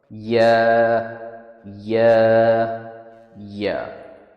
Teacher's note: یا کا مخرج زبان کے اگلے حصے کے نیچے کا حصہ اور اپر پیلیٹ کا ملاپ ہے. یہ ساؤنڈ تب نکلتا ہے جب زبان کے مڈل اور اپر پیلیٹ کے بیچ سے ہوا گزرتی ہے